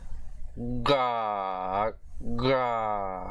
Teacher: now we have the voiced palatalized velar plosive consonant. We did the voiceless earlier.